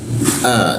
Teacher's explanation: A dibaca hamzah ya di tenggorokan bagian bawah hamzah.